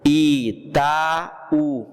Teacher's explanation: Itaú, o A e o U se separou, é um hiato